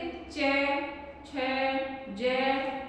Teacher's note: जिन व्यंजनों का उच्चारण करने में मुख द्वार को बंद करके इस प्रकार से बोलते हैं कि हवा उच्चारण स्थानों को कुछ रगड़ती हुई चली जाती है, स्पर्श संगीत, ये व्यंजन स्पर्श संघर्षी व्यंजन कहलाते हैं।